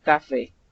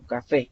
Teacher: café termina en vocal y tiene la mayor fuerza de voz al final, café. No es café, sino café.